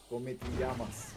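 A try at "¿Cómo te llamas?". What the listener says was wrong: Nu come, mă. Como. Como te. Tu mai mult folosești accent italienesc. Nu come ti, nu, como te.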